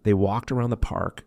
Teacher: they walked around the park connects walked and around, creating a natural rhythm